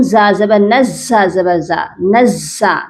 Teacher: نون کو زا سے سختی سے ملانا ہے، پھر زا کو ہم دوبارہ پڑھیں گے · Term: تشدید